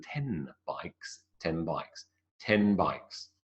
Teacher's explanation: 10 bikes might become 10 bikes, and I know it sounds like I'm forcing it, but 10 bikes is what it more effectively is than 10 bikes, 10 bikes, 10 bikes. So it's more of a m than a n. The n, definitely not.